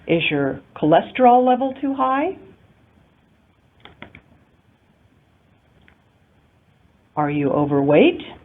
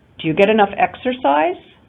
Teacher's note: any question that we can answer with yes or no unlike the information question or wh question has a rising intonation pattern